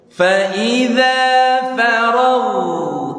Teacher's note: ada huruf ghain sukun, maka harus mengalir suaranya, namanya sifat rokhawah. Kalau tadi kan tawassut antara syiddah sama rokhawah, ini rokhawah ngalir.